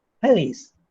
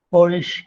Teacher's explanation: the alveolar fricative, voiceless, into a palatal voiceless fricative